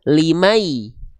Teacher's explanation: ketika masuk di limai jangan cuman masuk tapi dengung. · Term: idgam bigunah